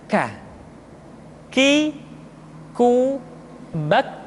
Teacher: Selanjutnya huruf k diucapkan dengan mengangkat pangkal lidah kita ke posisi di depan huruf qf. Ka diucapkan dengan mengalirkan nafas kita.